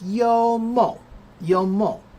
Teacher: I thought it was a third tone, but it's a first tone.